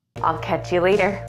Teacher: I'll catch you later. And the L in I'll links to catch to sound like will catch